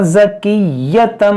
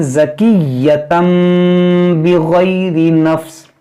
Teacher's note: یہاں دیکھیں یا مشدد ہے، اس کو پڑھیں گے دو بار